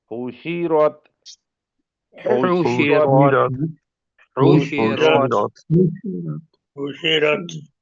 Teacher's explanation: ہا حروف حلقی ہے، شین کے اوپر سیٹی کا ساؤنڈ آئے گا، را موٹا پڑا جائے گا